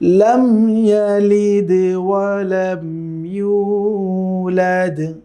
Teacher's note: সেটা হচ্ছে প্রত্যেকটি আয়াতের শেষে কিন্তু আমরা দেখতে পাচ্ছি দাল আছে, এবং ওয়াকফুর কারণে দাল যখন সাকিন হিসেবে উচ্চারিত হচ্ছে তখন কিন্তু সেখানে কলকলার সে সাউন্ড আসবে